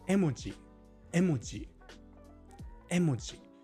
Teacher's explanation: Japanese doesn't put stress on syllables, but they do often put pitch on certain syllables, right? So for emoji, which is emoji in Japanese, emoji, it's a high pitch on the first letter. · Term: pitch accent